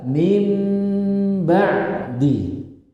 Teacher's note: Tapi dirubah, dibalik nun sukunnya menjadi miman mukhfatan, huruf mim yang tersembunyi, sehingga dibaca mim ba'di. Ini disebut apa? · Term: iklab